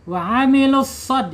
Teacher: Shadnya harus tebal. Harus tebal ya. Karena apa? Karena shad mempunyai sifat ee isti'la ya, sifat alhams.